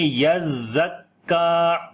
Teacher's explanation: کاف کو لمبا کریں گے، کھڑی زبر ہے